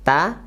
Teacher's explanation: ujung lidah menempel ke Pangkal Gigi atas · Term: huruf TA